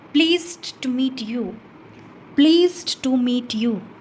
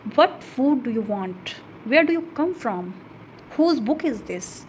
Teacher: व्हाट फूड डू यू वांट, वेयर डू यू कम फ्रॉम, हुज बुक इज़ दिस। तो हमारी जो टोन है वो फॉल हो जाती है एट लास्ट। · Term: फॉलिंग इंटोनेशन